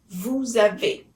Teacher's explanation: It's as if it were a one word. The S at the end of vous sounds like Z. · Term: liaison